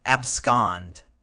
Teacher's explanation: It's pronounced scond with the stress on the second syllable